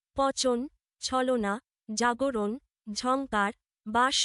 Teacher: জিভ প্রসারিত হয়ে সামনের অংশ শক্ত তালু স্পর্শ করে উচ্চারিত ধ্বনিগুলো হল তালব্য। পচন, ছলনা, জাগরণ, ঝংকার, বাস শব্দের চ, ছ, জ, ঝ, স ধ্বনি তালব্য।